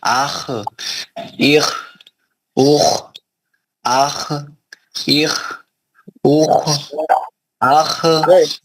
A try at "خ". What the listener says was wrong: نہیں پلٹانا نہیں، آواز پلٹانا نہیں، خلخلہ نہیں کرنا. خلخلے کے پانچ حرف کون سے ہیں؟ خطب جد، خوف، توئے، با، جیم، دال. یہ خا نہیں ہے، اس میں یہ خا نہیں ہے، اس میں خلخلہ نہیں کرنا.